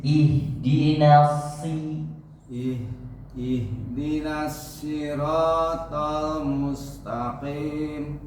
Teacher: Ihdinas si-nya nyingir lagi.